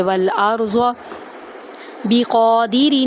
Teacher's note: قاف کو ہم پر کریں گے، ایک الف کے برابر لمبا کریں گے